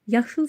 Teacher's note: Yaşıl sözündə a, ı, qalın saitlərdir. Dodaqlanmır.